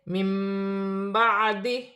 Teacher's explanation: نون ساکن کے بعد با ہے اور یہاں چھوٹی سی میم لکھی ہوئی ہے، نون ساکن کی آواز کو میم سے بدل کر غنے کے ساتھ ادا کیا جائے گا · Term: اقلاب